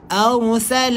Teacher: ra tebal, sebab apa? Sebelumnya berbaris fathah.